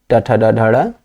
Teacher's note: जब आप ट बोलते हैं, जीभ जहां जाकर टच करती है, तालु के ऊपर वाला जो चिकना भाग है उसी को मूर्धा कहते हैं